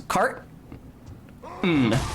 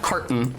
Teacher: there's no T you just like you say car you stop making any noise for second it's like a little pause cart n just just cart and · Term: glottal stop